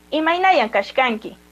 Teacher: cuando saludamos es Imainayan Kashkanki, que la entonación de voz da a entender que es una pregunta